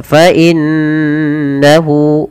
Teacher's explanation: apabila ada nun berharakat tasydid kita baca dengan bacaan gunnah. Cara membacanya yaitu menahan suara nunnya. Fa innahu baru dilepas.